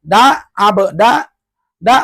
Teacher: da ujung lidah dengan gusi gigi yang atas